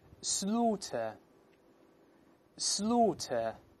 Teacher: 前面是发 O 撅嘴，这个 O 这个声音，后面一二呢它不加卷舌音发 A